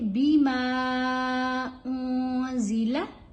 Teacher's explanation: मीम के ऊपर छोटी मद्दा है, मीम को लंबा करके पढ़ेंगे